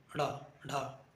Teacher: जीभ को एकदम ऊपर जाके खटाक से नीचे गिरती है। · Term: उत्क्षिप्त